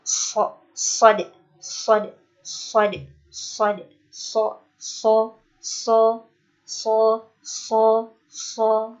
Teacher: Berbeda dengan huruf shad. Huruf shad itu karakternya tebal karena pada saat pengucapan huruf shad itu pangkal lidah kita naik.